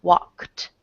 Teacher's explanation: the Ed ending is pronounced like a t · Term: the t ending